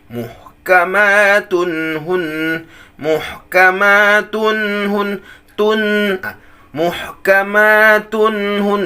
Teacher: Jadi tun di situ itu termasuk gunnah, tapi naqisah, sedikit sekali.